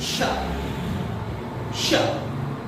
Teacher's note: जब इसको आप बोलेंगे तो इसमें आपको एक सीटी की ध्वनि सुनाई देगी। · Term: तालव्यशा